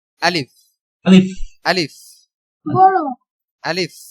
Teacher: ফ অনেকে উচ্চারণ করার সময় কিন্তু প উচ্চারণ করে আলিফ আলিফ এরকম উচ্চারণ করে উচ্চারণটা হবে কি আলিফ আলিফ আলিফ